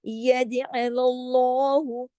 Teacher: صرف لام کو ہی ہیوی کریں گے، باقی تمام حروف باریک ہے، انہیں باریک ہی پڑھا جائے گا۔